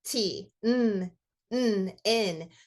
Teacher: if you say t and n, your tongue and teeth, they're in the same position. Everything's up front.